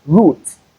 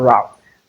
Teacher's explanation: we have the U sound in between, not the ow sound. So it is root, not route.